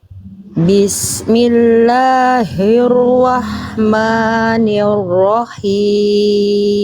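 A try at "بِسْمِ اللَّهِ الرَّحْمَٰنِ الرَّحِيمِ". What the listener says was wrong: Ro yang terakhir jelaskan jangan samar bunyi getarannya. Bismillahirrahmanirrahim.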